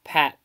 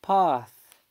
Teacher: Alright, now, as we can see from the IPA vowels chart, we can see that pat and pa uses two different vowels. In RP, pat uses the front near low unrounded vowel, whereas pa uses the back low unrounded vowel.